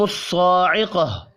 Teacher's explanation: فَأَخَذَتْكُمُ الصَّاعِقَةُ خا صاد اور قاف تینوں پر پڑھے جائیں گے. صاد کے اوپر کھڑی زبر بھی ہے، ایک الف کے برابر کھینچ کر پڑھنا ہے